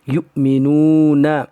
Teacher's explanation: یؤمنون یا حمزہ پیش یو، جب ادا کریں گے تو واو کو چھوڑ دیں گے اور حمزہ ساکنہ کو جھٹکے کے ساتھ پڑھیں گے